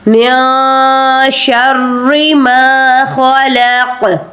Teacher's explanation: حروف اخفا ہے، اس لیے نون ساکن کے اوپر ہم غنہ کر رہے ہیں، اخفا کر رہے ہیں، نون کو چھپانا ہے آپ نے ناک میں